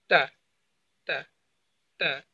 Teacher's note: আপনার জিহ্বার আগা, আপনার সামনের উপরে যে দুইটা দাঁত রয়েছে তার গোড়ায় লাগাবেন।